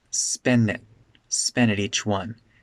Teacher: at becomes really de-stressed